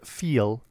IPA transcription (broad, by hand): fil